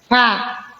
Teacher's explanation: Huruf fa bervokal A, keluar napas rohwa. Fa. Keluar napas rohwa.